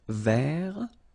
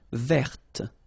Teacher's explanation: So masculine form, don't pronounce the final T. Vert. Feminine form, verte.